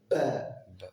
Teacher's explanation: Donc le ba vient évidemment des 2 lèvres. Ba, c'est une séparation d'un coup, d'accord, soudaine des 2 lèvres